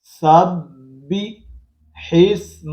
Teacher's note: ہا کو آگے ملائیں گے سین کے ساتھ، یہ حمزہ نہیں پڑھا جائے گا، الف نہیں پڑھا جائے گا